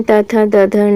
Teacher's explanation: दंत में त थ द ध न आता है